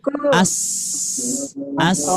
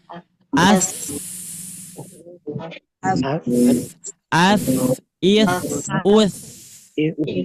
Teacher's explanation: Kalau mengucapkan huruf sa, ujung lidahnya sedikit keluar.